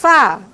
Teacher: ó, fricativa, desvozeada, lábio-dental